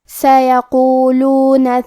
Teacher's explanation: کلمت سیقولون میں حرف القاف کی ادائیگی زبان کے جڑ اور تالو کے نرم حصے سے ہے. قاف حروف التفخیم میں سے ہے، لہذا ہمیں یہ حرف کو موٹی آواز میں پڑھنا ہے.